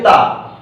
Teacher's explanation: बताइए ता कहां से बोला जाता है, जे दांत से बोला जाता है। इसमें हवा जो है वो दांत से छूकर निकल जाती है।